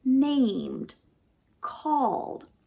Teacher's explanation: In other words, it's also silent, but instead of pronouncing the d as a t, we pronounce it as a d